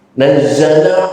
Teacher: nazzala zai di ujung lidah